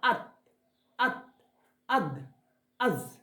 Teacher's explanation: জিহ্বার আগা ও সামনের উপরের দুটো দাঁতের আগার সাথে লাগাতে হবে। অর্থাৎ গতকালের ক্লাসের ছিল যে গোড়ার সাথে, আর আজকে একই জিনিস কিন্তু হবে আগার সাথে, অর্থাৎ দাঁতের মাথা থেকে উপরের দিকে।